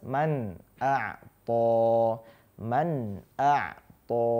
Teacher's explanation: ketika nun sukun bertemu dengan hamzah di sini, nun sukunnya ya dibaca jelas